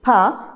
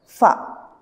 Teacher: Pa sound changes into fa. That is voiceless plosive pa changes into voiceless fricative fa